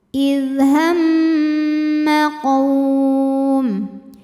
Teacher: Kemudian ada hukum namanya gunnah musyaddadah atau mim musyaddadah atau wajibul gunnah. Karena mim bertasydid, cara bacanya didengungkan.